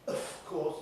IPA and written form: əf ˈkɔːs (of course)